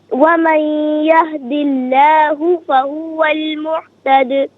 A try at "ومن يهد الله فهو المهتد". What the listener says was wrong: باقی آپ نے ماشاءاللہ صحیح پڑھا. محتد نہیں ہے، محتد. یہ ہا دو چشمی آئے اور وہ ہا الگ ہوتی ہے.